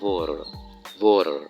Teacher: අර T sound එක D sound එකක් දෙන්නේ